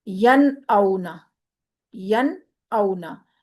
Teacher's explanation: ین میں ہم نے نون کو ظاہر کیا، کیونکہ آگے حمزہ ہے اور حمزہ حروف حلقی میں سے ہے. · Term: اظہار